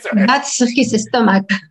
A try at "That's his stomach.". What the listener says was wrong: Okay, y cuidado con esa E delante la S.